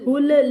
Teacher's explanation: لام کو کلکلے سے بچانا ہے